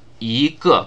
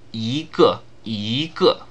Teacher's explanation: ge is the fourth tone, yi is the first tone, but when you put them together, yi changes to a second tone, yígè, because that flows more smoothly.